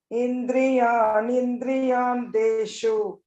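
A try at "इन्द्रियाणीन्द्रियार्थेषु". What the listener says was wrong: Here, indriyani indriyartheshu. Here there is indriyani indriya. Indriyani indriya. Dirkha is there, and this Mahaprana should be heard Mahaprana. Indriyani indriyartheshu.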